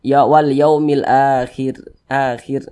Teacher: kita baca tipis Wal Yaumil Akhir akhir kita tipiskan huruf r-nya · Kita tipiskan huruf ro-nya.